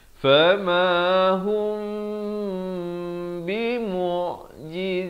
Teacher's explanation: di sini ikhfa syafawi, mim mati bertemu ba dipanjangkan dua harakat